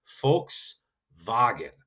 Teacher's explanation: That V is a hard f. And then the W is that V that we would normally say double V if you look at it how it's spelled.